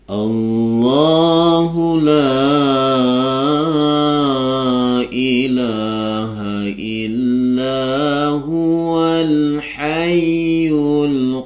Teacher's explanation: karena dia di awal kalimat maka Allahnya dibaca tebal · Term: lafzul jalalah tafhim